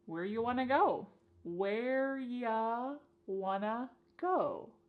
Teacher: You becomes ya, and want to becomes wanna.